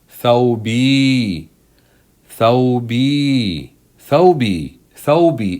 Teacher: The waw letter here is a genuine waw letter. It is pronounced on its own. It doesn't work as a long vowel here. It has a sukoon on top.